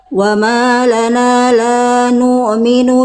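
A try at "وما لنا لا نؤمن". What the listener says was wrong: minu harus putus. Salah satu kesalahan hamzah sukun itu dia dibaca kayak panjang atau bunyinya bersisa. Cuman tadi ketika dibaca dalam ayat hamzah sukunnya kesalahannya apa? Poin 2. Dalam keadaan sukun dibaca panjang atau bersisa, maksudnya panjang di sini bersisa bunyinya. Harusnya dibaca betul-betul putus.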